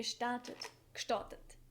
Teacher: that GE is sometimes pronounced as k